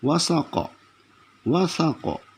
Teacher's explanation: Jangan sya, jangan sa. Jadi wasaqa di ujung lidah. Wasaqa. Lalu karena dijadikan qalqalah kubra jadi wasaqa.